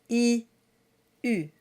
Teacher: You get the U by rounding around I.